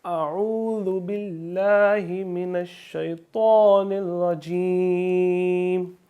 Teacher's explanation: ذال میں سیٹی کی آواز نہیں آئے گی